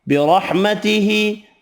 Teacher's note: را زبر کی وجہ سے پر پڑھیں گے، کھڑی زیر ایک الف کی مقدار میں کھینچ کر پڑھیں گے